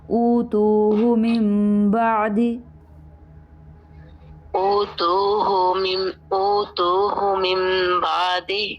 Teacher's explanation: اچھا اوتوہ میں دیکھیے حمزہ زبر وا او تاپش و تو او تو یہ تو لمبا ہو گیا، لیکن ہا کے اوپر صرف ایک پیش ہے، آگے واو نہیں ہے، اس کو لمبا نہیں کرنا